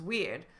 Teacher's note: When I say weird, I'll often drop that R.